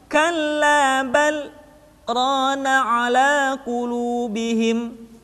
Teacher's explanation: Kalimat bal berhenti sejenak, tahan nafasnya selama 2 harokat, kemudian dilanjutkan kembali